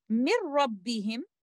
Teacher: letter noon sakina will be completely merged into letter ra without any gunna.